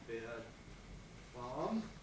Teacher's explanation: we lost R whenever it wasn't followed by a vowel.